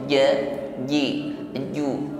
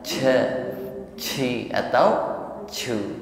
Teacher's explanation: ingat tidak ada hembusan nafas, sifatnya al-jahru. Ini hibas jarayanun nafasi, tertahan aliran nafas ketika mengucapkan cim.